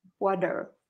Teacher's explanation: don't pronounce the T. Pronounce it like a D. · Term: D sound